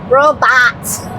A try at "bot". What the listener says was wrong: No, there's no w in that, either. Say bot.